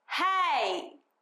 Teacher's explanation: it actually starts on a sort of more of a ah or a e kind of sound, and then it moves into an e. So what we need to do in this kind of situation is we want to stay as open for as long as possible on the open wide vowel, the ah, right? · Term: diphthong